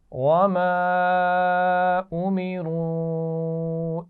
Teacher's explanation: दोनों पर अलिफ मद्दा और वाव मद्दा है और उस पर छोटी मद भी है, तो दोनों को थोड़ा सा ज़्यादा खींच कर पढ़ेंगे